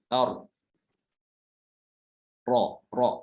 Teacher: Ini adalah sifat yang dimiliki oleh huruf ro. Karena ketika diucapkan ro itu disertai dengan bergetarnya ujung lidah. Ro ya, ketika diucapkan itu bergetar lidahnya, dan ini tidak dimiliki oleh huruf hijaiyah selain huruf ro saja ya. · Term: takrir